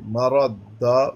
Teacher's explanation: را پر زبر ہے، تو مفخم کریں گے